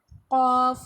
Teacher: Next ہے قاف جس کو ہم نے پر بھی پڑھنا ہے. زبان کی جڑ کوے کے قریب جب نرم تالو سے لگے گی تو قاف ادا ہوگا. نیکسٹ ہے کاف جس کو ہمیں باریک پڑھتے ہیں.